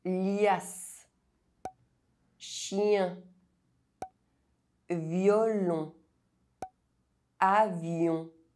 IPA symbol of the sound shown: j